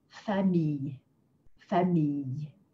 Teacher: So it's a very light y sound. It's a little bit chopped.